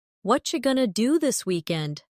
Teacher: Did you hear how what are you going to became what you going to? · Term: connected speech